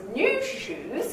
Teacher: those new shoes they've got two stresses